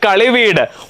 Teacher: ദ്വിത്വസന്ധിയാണ് കളിയധികം വീട് കളിവീട് ഉത്തരപദത്തിന്റെ ആദിയിൽ വീണ്ടും വായെ എന്ന മധ്യമം വന്നിരിക്കുന്നു മധ്യമം ശിഥിലമായതിനാൽ ഇരട്ടിപ്പ് സംഭവിക്കുന്നില്ല പക്ഷേ സന്ധി ദ്വിത്വസന്ധിയാണ് കളിയധികം മണ്ണ് കളിമണ്ണ് ഉത്തരപദത്തിന്റെ ആദിയിൽ മ എന്ന അനുനാസികം